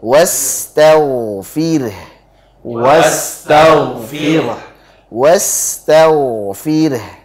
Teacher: Jadi was, alirkan sinya, rokhawah. Tau, alirkan tau.